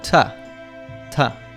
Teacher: The preposition to often reduces to tuh.